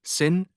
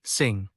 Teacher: The difference in the final nasal sound proves that these two are separate phonemes.